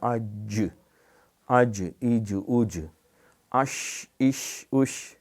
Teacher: ساکن کریں گے تو حمزہ جیم زبر آج آج، زبان کا یہ وسط والا حصہ تالو کے ساتھ جو زبان کا جو سینٹر والا حصہ ہے نا، وسط زبان اوپر کے تالو کے ساتھ یہ لگتی ہے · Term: حروف شجریہ